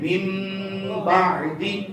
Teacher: یہاں پر اس طرح کر کے چھوٹا سا میم لکھا ہوگا تو نون ساکن اور تنوین کو میم سے بدلیں گے. من بعد نہیں پڑھیں گے بلکہ پڑھیں گے من بعد. · نون ساکن ہے، نون ساکن یا تنوین کے قاعدے پڑھ رہے ہیں نا. نون ساکن اور اس کے بعد حرف با آ گیا. اب اس کو میم سے بدل کر اخفا کریں گے.